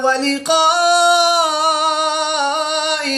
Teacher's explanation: الف مدہ کے بعد حمزہ اسی کلمے میں ہے تو یہاں پر مد متصل ہوگی، 3 سے 5 الف تک کھینچ کر پڑھیں گے